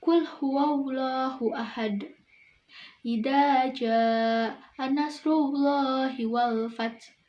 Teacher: hukum lam jalalah taglik, yaitu artinya tebal. Ciri-cirinya sebelum lam jalalahnya berharokat fathah atau domah.